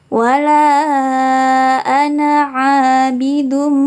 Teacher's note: lafal ananya tidak boleh dibaca panjang, tapi hanya 1 ketukan saja seperti biasa. Wala ana a di sini bacaan mad tabi'i.